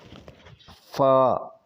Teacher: جب اوپر والے دانتوں کی نوک نیچے والے ہونٹ کے اندر گیلے حصے سے لگے تو یہ لفظ ادا ہوتا ہے